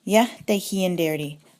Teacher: Remember that R in the prefix changes to an H when the de for the negation gets tacked on